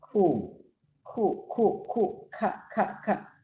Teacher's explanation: Jadi lebih pecah, maka pada akhirnya mengeluarkan nafas, maka disebut dengan ham.